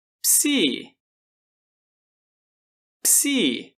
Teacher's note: Só devemos tomar um pouquinho de cuidado para não pronunciar um I entre as duas consoantes. Psi, ps. Muito bem.